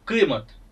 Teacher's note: क हा ध्वनी काफ या ध्वनीच्या जवळपास जाणार आहे. आणि यह क से अलग गले से निकलने वाली क ध्वनी है